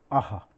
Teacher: ह का उच्चारण जो है कंठ से होता है।